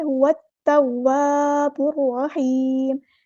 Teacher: لام یہاں پہ ظاہر نہیں کریں گے، لام شمسیہ ہے ، هو التواب الرحیم، توا، یہاں پہ الف مد آ گیا